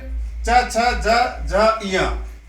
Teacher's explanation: च वर्ग तालव्य में आता है।